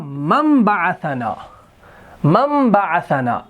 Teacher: تو یاد رکھیں، یہ تجوید کے حوالے سے یہاں پر قاعدہ ہے کہ جب نون ساکن کے بعد حرف با آ جاتا ہے تو اقلاب کا قاعدہ ہوتا ہے، اور اقلاب کا قاعدہ کیا ہے کہ جب نون ساکن کے بعد حرف با آ جاتا ہے تو میم کا تلفظ کیا جاتا ہے